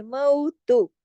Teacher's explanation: واویلین ہے، آواز مئو، اردو کے لفظ لکھنؤ سے ملے، دو حرکات کھینچے · تا پیش تو ایک حرکت کھینچے گا، زیادہ لمبا نہیں ہونا ہے